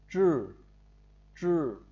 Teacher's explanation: Âm đầu lưỡi sau thì gồm có ba phụ âm trên. Khi phát âm đầu lưỡi cuốn lên phía dưới hàm trên, ví dụ chữ này chúng ta đọc là chữ trư, giống như chữ trừ trư của tiếng Việt.